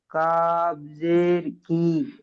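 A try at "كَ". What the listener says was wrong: কাবের উপরে জবার আছে দেখুন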